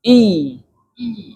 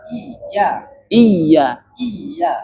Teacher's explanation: jadi kalau misalkan huruf ya bertasydid, bunyikan dulu ya sukun. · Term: tasdid